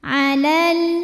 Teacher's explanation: Sukun ketemu sukun gak bisa dibaca sehingga sukun pertama dilepaskan secara bunyi, atau proses melepaskannya itu disebut dengan takhallus bil hadfi. Jadi kalau wasol lamnya pendek ya karena gak punya alif